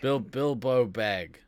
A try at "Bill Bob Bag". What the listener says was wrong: No, there's two B's. It's Bill Bob. It's not Bilbo.